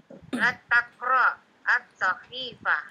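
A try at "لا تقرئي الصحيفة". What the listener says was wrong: Nah, pakai hamzah ya. La taqra'i.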